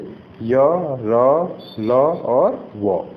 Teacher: ये अंतस्थ व्यंजन कहलाते हैं। इन व्यंजनों के उच्चारण के समय जीभ जो है मुंह के किसी भी भाग को पूर्णतः नहीं छूती।